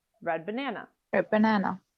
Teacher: You make the same movement with your tongue for both, so they behave in similar ways. Here in the phrase red banana, you might drop the D completely